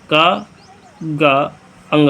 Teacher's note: इस अल्प प्राण व्यंजन में हकार जैसे ध्वनि की ध्वनि नहीं होती है · जिन वर्णों जिन व्यंजकों के उच्चारण में मुख में कम हवा निकले अल्प प्राण कहा जाता है